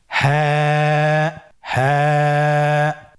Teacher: হা হরফটি উচ্চারণের স্থান কন্ঠনালীর শুরু হতে অথবা আমরা যদি আরবিতে বলি হলকের শুরু হতে এটা এ হরফটি উচ্চারিত হয় কন্ঠনারীর শুরু থেকে